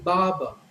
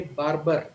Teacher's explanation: the R in the first syllable and the R in the second syllable both are silent